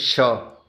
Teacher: श, तालव्य, है ना, इसमें उच्चारण स्थान तालु है। श मूर्धन्य मूर्धा, श वर्तस्य दंतमूल मसूड़ा उच्चारण स्थान।